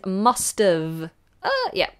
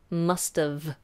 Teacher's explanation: make sure that V is the bottom lip top teeth